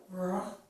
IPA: ɹ